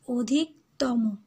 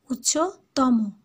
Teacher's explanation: তম এটা শব্দ শেষে কি হচ্ছে ময়ের সাথে ওকার হয়ে যাচ্ছে